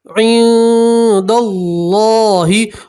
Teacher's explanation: नून सकीन की आवाज़ को नाक में छुपाएंगे और एक अलिफ के बाद गुन्ना करेंगे। और अल्लाह के नाम से पहले सबर है तो अल्लाह का नाम पूर पढ़ेंगे, मोटा पढ़ेंगे और हा के ऊपर वफ़ करेंगे तो ज़ेर की जगह आप जज़म पढ़ेंगे। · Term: नून सकीन का इक्फा